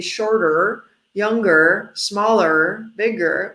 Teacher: in the u.s. we pronounce the R much more